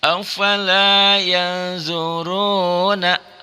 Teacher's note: Afala ya nun sukun, nun mati bertemu dengan za. Nun sukun ketemu za itu ikhfa ya.